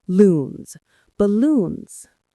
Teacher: The stress is on the second syllable, which you hold a little longer.